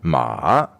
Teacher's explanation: The third tone is first falling and then going up again